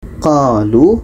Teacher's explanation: qo dipanjangkan dengan alif, lu dengan waw sakinah